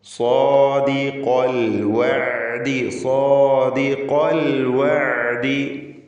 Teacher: സാ എന്ന് പറയുമ്പോൾ സ്വാദിന് പൂർണ്ണമായ തഫ്ഖീം, അലിഫിനും തഫ്ഖീം.